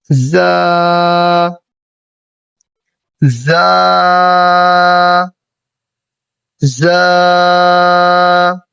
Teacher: زا کا جو مخرج ہے یہ ہے زبان کی نوک اور دونوں دانتوں کے اندرونی کنارے۔ زبان کی نوک جب ہم دونوں دانتوں کے اندرونی کنارے سے آہستہ سے لگائیں گے تو ہمارا زا یہ بالکل صحیح طریقے سے ادا ہوگا، اور اس کو ہم نے سختی کے ساتھ باریک پڑھنا ہے۔ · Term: حروف صفیریہ